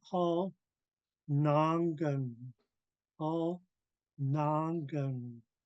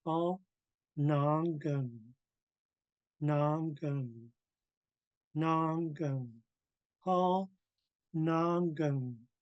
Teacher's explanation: First part of the verb is high tone, rest of it's low tone.